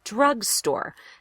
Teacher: Drugstore is a compound word, so you're going to stress both syllables pretty equally.